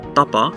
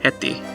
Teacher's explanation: the voiceless consonants, being pe, te, ko, are never aspirated and are pronounced the same no matter their position in the word. So for example, tapa, at the beginning of the word, you can see that it's unaspirated, ta, ta, tapa.